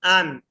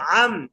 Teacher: প্রথমে হামজা নুন একটু নরম আন, এরপরটা আইন মিম একটু শক্ত আম